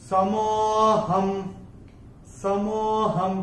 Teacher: यहाँ पे ह के ऊपर अनुस्वार के बाद का अक्षर है स, और अनुस्वार के बाद जब स आएगा तो अनुस्वार का उच्चारण होगा म